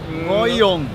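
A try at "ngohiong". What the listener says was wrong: It's hard to pronounce the H somewhere there, but there's an H there.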